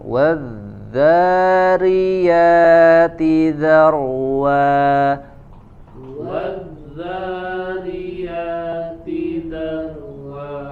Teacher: Huruf dzal di sini tasydid mengalir suaranya.